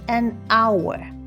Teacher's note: hour starts with an H, but H is silent, so it actually starts with a vowel sound, making it an hour.